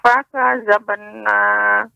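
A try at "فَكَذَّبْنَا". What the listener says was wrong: Fakadzabna. Ada tasydid, Nek. Fakadzabna.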